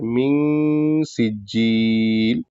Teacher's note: सिज्जिल में जी मुशद्द है तो इसको मुशद्द अदा करके खींच के पढ़ना है